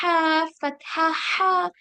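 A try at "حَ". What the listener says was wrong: यस, थोड़ा सा और प्रेशर लगाइए।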